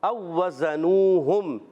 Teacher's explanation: او وزنوہم، یہاں دو واو ہیں، پہلا واو دوسرے واو میں ادغام ہو رہا ہے اس کا، اور او وزنوہم ذرا رک کر ادا کریں گے، زا کی ادائیگی سیٹی کے ساتھ